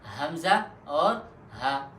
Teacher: اقصائے حلق یعنی گلے کا وہ حصہ جو سینے کے ساتھ قریب ہے، تو اس سے 2 حروف ادا ہوتے ہیں اور وہ 2 حروف یہ ہے حمزہ اور ہا۔